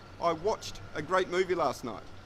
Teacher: after ch, we also use the t sound, as opposed to the vibrating D sound